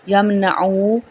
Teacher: او پیچھے بھی واو مدہ ادا ہو رہا ہے، آگے بھی، اور یہاں پہ اظہار بھی ہو رہا ہے کیونکہ حروف حلقی میں سے عین آیا ہے